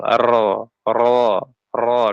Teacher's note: sedangkan huruf ro cara mengucapkannya sifatnya itu adalah dia gesernya ke belakang